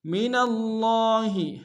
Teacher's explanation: لام کے تنوین کو آگے من کے میم کے سامنے لانا ہے، تشدید زور دیں گے۔ من اللہ، من میں نون کو لفظ اللہ کے لام کے سامنے لانا ہے، تشدید زور دیں گے۔